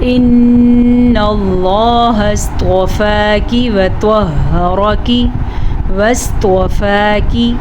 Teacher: کاف باریک پڑھنا ہے، یہ باریک کاف ہے